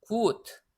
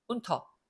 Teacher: 2번은 gut하고 장모음이 되는데 나머지는 단모음들이에요. 왜냐? 자음 두 개가 연달아 오면서 모음을 엄청나게 압박을 주잖아요.